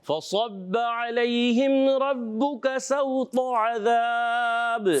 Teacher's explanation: فصب صاد موٹا رکھنا ہے اور با مشدد ہے، ذرا رک کر ادا کریں گے